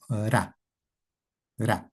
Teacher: en el quechua no hay R, ese sonido de R vibrante múltiple. Solo existe el sonido ra, ra, vibrante simple